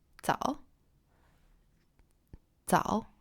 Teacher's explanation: it's more like a rising tone, like you're asking a question